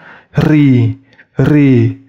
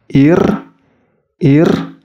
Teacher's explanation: Dan ketika disukunkan ir, ir, itu mulutnya tetap tersenyum. Dan pangkal lidahnya tidak menuju langit-langit, sehingga terdengar tipis. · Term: tarqiq